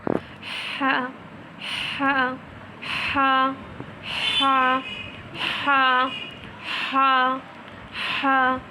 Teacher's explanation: تو جب آپ ادا کریں گے اور ساتھ ہی ٹھنڈی ہوا باہر آئے گی تو آپ کو معلوم ہوگا۔ اس کا ساؤنڈ بہت ہی لائٹ ہے، ہیوی نہیں ہے، بالکل لائٹلی ادا کرنا ہے اور اندر سے آواز آئے گی، ہاں، ہوا باہر آتی محسوس ہوگی ہم کو